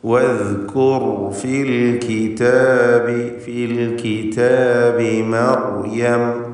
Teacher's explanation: റാനും അല്പം അയവുയർത്തി തവസ്സുത്ത് എന്ന സിഫത്ത് നൽകിക്കൊണ്ടാണ് ഉച്ചരിക്കുക